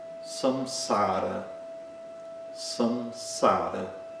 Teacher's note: Não é o M que aparece antes de P e B, exatamente como no português. Então, utiliza-se o Anusvara, que produz essa nasalização na primeira sílaba